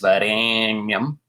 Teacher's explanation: That's an extra long A sound with 3 matras.